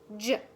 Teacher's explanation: So this one is produced just like the CH, ch, but turn your voice on, j. That you should be able to feel a vibration in your vocal cords when you say the jump sound or the J sound.